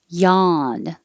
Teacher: yawn the same ah but without the r